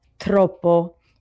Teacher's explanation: it was a lot easier for me to practice the R, rolling the R after that hard T sound